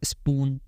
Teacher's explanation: तो यहाँ पे आप जब स्पून बोलोगे या स्पॉट बोलोगे तो आपको ना वो पफ साउंड फील नहीं होगा